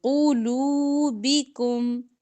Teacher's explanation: باریک، وَلِيُمَحِّصَ مَا فِي قُلُوبِكُمْ، اس کو قلوبکم نہیں پڑھنا، قو، قاف موٹا بھی اور پیش کی وجہ سے ہونٹ گول کریں گے ، قلوبکم، واللہ علیم بذات الصدور، واللہ لام موٹا پڑھیں گے،